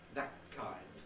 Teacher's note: you can have a geminated velar